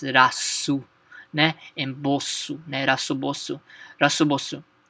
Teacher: we don't have the L Sound in Japanese so L become R